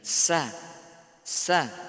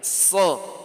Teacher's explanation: Bandingkan shad, sa tidak usah angkat pangkal lidah. Begitu kita katakan shad, angkat pangkal lidah.